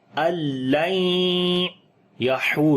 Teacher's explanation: آواز کو ناک کے اندر لے کر جائیں گے اور لمبا کریں گے، ادغام غنے کے ساتھ ہوگا، · ہا کو گلے کے درمیان والے حصے سے پڑھیں گے، لمبا بھی کریں گے، واو مدہ ہے، اور جب رکیں گے تو را کے اوپر جزم آ جائے